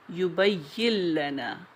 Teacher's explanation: یہ ادغام بھی کامل ہے کیونکہ نون نہیں پڑھا جا رہا، لام پڑھا جا رہا ہے